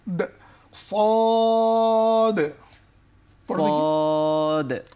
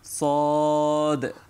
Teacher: যখন শুরু হবে সদ একটা শীষ আসবে, তারপরে অ যখন টান হবে তখন জিহ্বার মাঝখান তালুর দিকে উঠবে, মোটা করে পড়তে হবে।